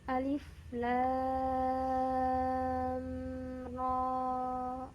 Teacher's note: di sini la-nya kita baca 6 harokat dan ro-nya 2 harokat saja.